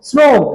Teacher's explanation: কিন্তু আপনি যখন শ্রম উচ্চারণ করেন দেখেন জিহ্বাটা অনেকটা দাঁতের কাছে এগিয়ে এসেছে দাঁতের ঠিক গোড়ার অংশে আপনার কাছে এই উচ্চারণটা তখন ঠেকছে শ্রম জিহ্বার আগাটা দেখেন দাঁতের সামান্য গোড়ার কাছে এসে স্রো উচ্চারণ করেন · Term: দন্তস